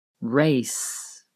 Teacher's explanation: You can hear the hissing at the end of the word race.